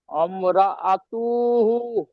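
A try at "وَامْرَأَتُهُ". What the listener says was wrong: আতু টান হবে না আতু হা উল্টা পেশ হু টান হবে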